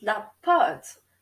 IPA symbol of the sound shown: pɑt